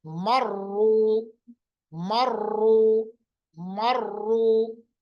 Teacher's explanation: जब भी रा पे पेश होगा, साथ में तशदीद होगी, तो रा को मोटा पढ़ा जाएगा